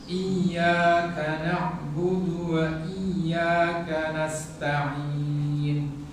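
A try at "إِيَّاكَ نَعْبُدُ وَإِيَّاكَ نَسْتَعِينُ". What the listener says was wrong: Tipiskan ya-nya.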